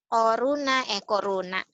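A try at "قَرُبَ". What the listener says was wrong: Corona mah lain lagi. Koruba, titiknya di bawah.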